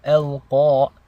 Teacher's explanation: Qaf is a heavy letter. This means you want to pronounce it with tafkhim. Your mouth is very filled with air and it is a very thick letter. Al-Qa. Your tongue is also elevated towards the roof of your mouth.